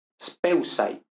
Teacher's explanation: Caída de la dental ante la sigma